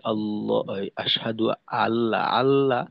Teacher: হামজা মাখরাজ থেকে উচ্চারিত হয় না। হলকের শুরুর থেকে অনেকটা উপরে চলে আসে।